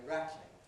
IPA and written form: ˈræt.lɪŋ (rattling)